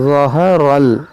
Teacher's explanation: ज़ा मोटा करेंगे, रा मोटा करेंगे, हा को बारीक पढ़ेंगे